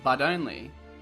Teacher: The word but will often connect with the next word if it starts with a vowel sound. Note that in American English it sounds more like this, but only. The T sound becomes a D sound.